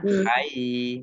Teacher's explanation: ya-nya dibaca double, ada tasdidnya